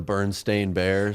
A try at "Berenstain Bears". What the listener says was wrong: That's just a mispronunciation. It's Berenstain Bears, not Berenstein Bears. That's just you're pronouncing it differently.